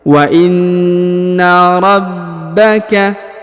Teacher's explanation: Kemudian huruf ba ditahan dan ditekan karena terdapat tanda tasdid ya.